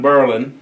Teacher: The emphasis is on the first syllable.